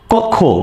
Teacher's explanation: ক্ষীয় খ থাকলে হচ্ছে ক খ উচ্চারিত হয়।